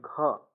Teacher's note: कंठ वर्ग का है मतलब इसमें कंठ की सहायता से बोला जाता है